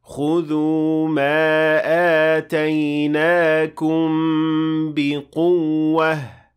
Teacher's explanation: You have to show the stress on the waw by showing that there are two waws in this case.